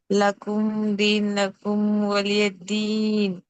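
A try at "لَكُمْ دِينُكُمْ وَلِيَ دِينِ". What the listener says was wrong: మీమ్ సాకిన్ని త్వరగా స్పష్టంగా పలకాలి, దీర్ఘం తీయకూడదు. ఇప్పుడు దీర్ఘం తీశారు, రెండు చోట్ల మీమ్ సాకిన్ ఇజార్ చేయాలి. ఇజార్ షఫవి త్వరగా చదవాలి, స్పష్టంగా చదవాలి. లకుం దీనుకుం వలియదీన్. నూన్ మీద దొమ్మ ఉంది. దీనుకుం దీనుకుం.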